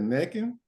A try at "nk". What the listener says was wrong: You added in an N. Why'd you put an N in there? At the end, he said neck in.